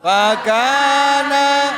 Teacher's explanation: pertama ada huruf fa, itu ada keluar sedikit anginnya ya. Itu namanya sifat huruf.